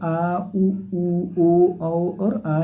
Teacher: और आ ये आपका पश्च फ में आता है यानी कि जिन स्वरों के उच्चारण में जीभ का पश्च भाग काम करता है